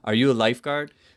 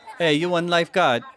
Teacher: here in the pigeon the intonation pattern falls at the end of a yes/no question